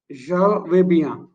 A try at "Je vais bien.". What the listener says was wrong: Super.